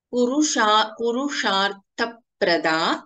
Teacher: Sha is Shanmukha Sha and Tha is a Mahapranakshara